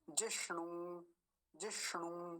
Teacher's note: एक मूर्धन्य सकार और एक दीर्घ उकार